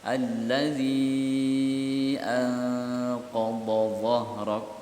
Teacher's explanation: Alladzi jadi zi panjang itu mad jaiz munfasil, ada mad tabi'i bertemu dengan hamzah maka panjangnya 2,5 halif 5 harokat.